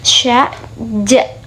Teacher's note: apabila ujung lidah bertemu dengan langit-langit keras terjadilah bunyi